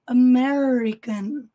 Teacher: American, o R aqui retroflexo, enrolando a língua. A ponta da língua toca o céu da boca.